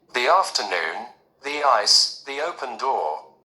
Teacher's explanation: we pronounce the with the long EE sound